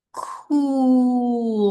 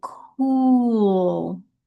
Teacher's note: hear that little dip. Like there's a W in there. And that's so the lips are going out there for the ooh, right?